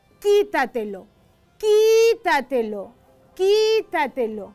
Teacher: Acá vemos que la fuerza está en esta sílaba, qui.